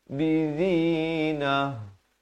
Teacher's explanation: kalau waqaf di sini ta marbutah ditukarkan kepada bunyi ha dan diberikan tanda mati mendatang.